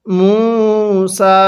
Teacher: মিমের মধ্যে 1 আলিফ টান দিব, পেশের পরে ওয়াও সাকিন 1 আলিফ টানতে হবে এবং সিনের মধ্যেও 1 আলিফ টান দিব।